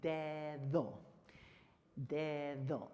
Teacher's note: anytime that letter D in the Spanish language is between two vowels, it is your TH voice